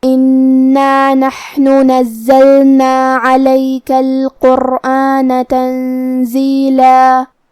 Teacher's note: کلمت انا میں یہاں نون پہ تشدید ہے، لہذا 2 حرف کے برابر ہم حرف النون کو پڑھیں گے کیونکہ تشدید کی اصلیت 2 حرف ہے